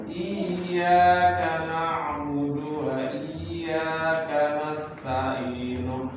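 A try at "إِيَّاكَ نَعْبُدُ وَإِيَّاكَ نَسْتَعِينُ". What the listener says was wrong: Baik, ain yang jadi hamzah. Iyyaka na'budu wa iyyaka nasta'in. Ta'i bukan i, hamzah. Itu ain.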